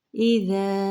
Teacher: ذال کے حرکت کو جاری رکھیں گے لیکن ہلانا نہیں ہے، ز نہیں کرنا، یہاں پہ نرمی سے پڑھیں گے